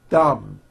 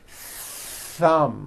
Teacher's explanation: out but there was never any air friction that's not good you must stretch out the th sound and hear the air friction